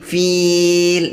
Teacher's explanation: ditarik ke belakang bibirnya supaya keluar suaranya itu tipis